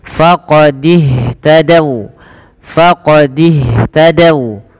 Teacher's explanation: Kemudian pada lafal faqadih tadau, ini hati-hati teman-teman, jangan membaca faqadih tadau, ini tanda ini tidak dibaca alifnya dan dia langsung disegerakan kepada huruf setelahnya, yaitu kepada huruf ha. Maka dan ha alirkan nafasnya karena sifat hamas